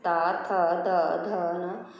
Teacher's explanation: तवर का उच्चारण स्थान है, तवर का उच्चारण स्थान होता है दंत। जब हम बोलते हैं ता, थ, द, ध, न, तो हमारी जीभ अंदर के दांतों को, नीचे वाले दांतों को छूती है